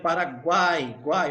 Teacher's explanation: não sai nem um pouco de ar pelo nariz quando eu pronuncio o guai aqui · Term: tritongo oral